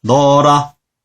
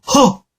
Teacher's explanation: 어로 발음합니다. 이런 경우 히읗이 탈락했죠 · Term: 히읗 탈락